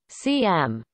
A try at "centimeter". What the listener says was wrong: Why do you say CM? I said centimeter. Okay, so you say centimeter.